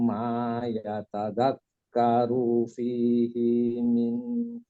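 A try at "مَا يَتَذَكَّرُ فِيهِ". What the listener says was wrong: Bukan min tadi Pak. Dari hi ke man itu agak susah memang. Fihi ma itu agak susah. Jadi kebacanya hampir-hampir fihi min. Tadi bacanya min seperti itu. Ma yatadzakkaru fihi ma tadzakkaru.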